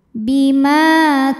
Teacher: Bima Ma hukumnya adalah Mad Thobi'i ziri sebab ada Alif yang sebelumnya berbaris fathah maka huruf mim panjang dua harakat bimaa k dihukumi dengan mad thobiiiri sebab ada Alif yang sebelumnya